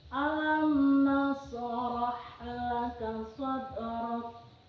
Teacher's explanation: mim mati bertemu nun. Hukum bacaan izhar sapawi. Cara membaca mim mulut tertutup.